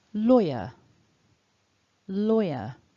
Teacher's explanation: And then that second syllable. Basically, when we're pronouncing this word in isolation, not in a sentence, the R doesn't really come into play. It's just that weak schwa. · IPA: /ə/